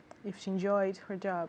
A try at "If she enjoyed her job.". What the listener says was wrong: Exactly. Yes. It's the same thing. Okay, good.